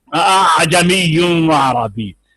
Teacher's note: پہلے والا حمزہ ہے، دو حمزہ ہیں، پہلے والا حمزہ ہے اور دوسرے والا حمزہ جو ہے وہ نہ خالص الف پڑھا جائے گا نہ خالص حمزہ پڑھا جائے گا، اور اس کے بعد عین ہے، عین کو آپ نے صاف کر کے ادا کرنا ہے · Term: تسہیل